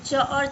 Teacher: च और छ का उच्चारण स्थान तालव्य होता है।